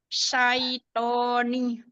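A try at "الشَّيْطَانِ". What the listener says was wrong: Iya, yang ini. Jadi huruf shinnya jangan tertukar.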